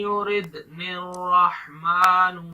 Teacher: دال پر کلکلا کریں گے، یعنی جھٹکا دے کے پڑھیں گے